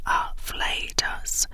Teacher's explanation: It is pronounced afflatus, with a stress on the second syllable.